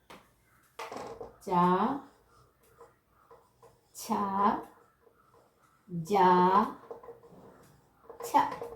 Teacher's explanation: ഇത്രയും എന്താണ്? താലുവിൻ്റെ സഹായം കൊണ്ട്, അണ്ണാക്കിൻ്റെ സഹായം കൊണ്ട് ഉച്ചരിക്കുന്നവയാണ്